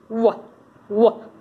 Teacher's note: Bilabial, w, w, remember, approximation, the lips don't touch, it's not w, it's w. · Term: bilabial velar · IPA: /w/